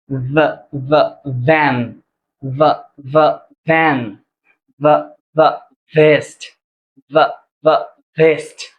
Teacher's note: সাউন্ডটা যখন আমরা উচ্চারণ করতে যাব তখন হচ্ছে উপরের দাতটা আমাদের ঠোটের উপরে থাকবে।